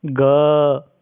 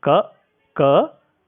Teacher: ख की अपेक्षा घ में अधिक ध्वनि होने के कारण ग घ ङ आदि घोष हैं और क ख आदि अघोष व्यंजन कहलाते हैं